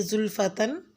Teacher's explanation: زلفتن کی زبر تنوین کو غنہ کی آواز کے ساتھ پڑھیں، یعنی زلفتن غنہ کریں گے تو زلفتن کی تنوین کے ساتھ آواز کے ساتھ پڑھا جائے گا۔